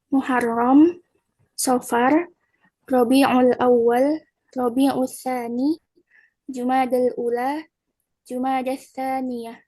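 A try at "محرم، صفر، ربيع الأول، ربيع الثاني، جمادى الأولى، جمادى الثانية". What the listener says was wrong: Toyib, Mumtazah, Masya Allah. Ini teman-teman ya, sudah bagus. Sudah sesuai panjang pendeknya, seperti itu.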